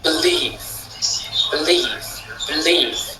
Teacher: believe, c'est la deuxième qui accentue leave